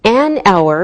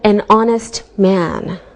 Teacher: We say an hour because we don't pronounce the H, so it sounds like a vowel sound.